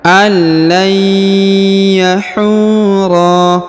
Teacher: Ya didengungkan Ya ditahan dan ditekan